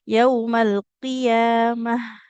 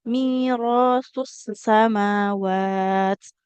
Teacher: jadi ha sukun mengalir suara dan juga nafas dengan sempurna